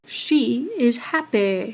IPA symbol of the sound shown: ɪ